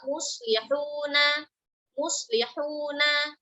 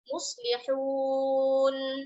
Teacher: Ketika kita wakaf, itu harokatnya diganti dengan sukun saat kita wakaf ya. Nah, ini sukunnya namanya sukun arid.